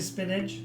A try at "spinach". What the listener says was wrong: Yes, it doesn't have a G in it. Spinach? I don't even eat vegetables and I know it's not pronounced spinach.